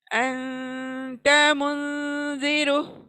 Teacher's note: देखिए, अंत मुंजिरो, all in one sound, सिर्फ नून साकिन है, उस पे रुकना है 1 सेकंड के लिए। अंत मुंजिरो, जब तक रुकेंगे नहीं नेसल में साउंड जाएगा नहीं।